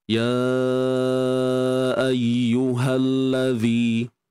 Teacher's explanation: Baik, di sini tuan-tuan dan puan, kita kena panjangkan 4 atau 5 harakat. Hukumnya mad jaiz munfasil.